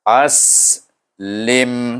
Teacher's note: Hamzah digabungkan dengan sin yang mati. Kita tahu sin bunyinya berdesir dan berangin.